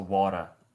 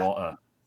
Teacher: It's a tap actually. Interestingly, the T gets tapped. It's called T flapping.